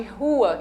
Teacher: eu tenho o R aspirado, de rua